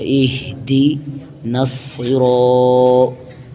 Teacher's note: صاد پر ہے، حروف مستعلیہ ہے، اس لیے اس کو پر پڑھا جائے گا